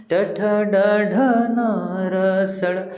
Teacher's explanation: जेव्हा आपण वर्ण उच्चारण करतो तर आपली जीभ आहे त्या मूर्ध्याला स्पर्श करते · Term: मूर्धन्य वर्ण